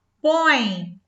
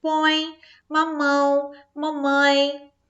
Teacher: Reparem que o som sai pela boca e pelo nariz. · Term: nasal